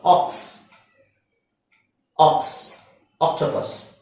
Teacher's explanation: ಇದು ಆಕ್ಸ್ ಅಂತ ಹೇಳ್ತಿವಿ ಆ ಓ ಅಂತ ಹೇಳಲ್ಲ ಓಕ್ಸ್ ಅಂತ ಹೇಳಲ್ಲ